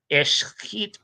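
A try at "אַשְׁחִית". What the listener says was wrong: Did say ashchit, no? Yeah, ashchit. No, you said Eschrit. Esh is for the Kal.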